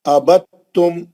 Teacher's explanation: ابتم، دال کا تا میں ادغام ہو گیا. یہ پورا ایک ہی کلمہ ہے حالانکہ ابتم از ون ورڈ، دال ساکن کا تا میں ادغام ہو گیا، تا پہ تشدید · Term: ادغام متجانسین